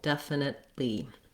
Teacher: So it sounds again like def, nit. I move up to that T and then I release it right into the L of the li syllable